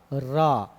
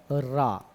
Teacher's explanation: लुंठित व्यंजन कौन सा है, रा है। जीभ ऐसे लुढ़क रही है, अग्रभाग मसूड़े को टच कर रहा, फिर उसके बाद ऐसा लगेगा कि लुढ़क रही है।